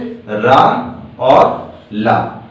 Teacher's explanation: तथा इससे रा और ला, रा होता है लुंठित और ला होता है पार्श्विक व्यंजन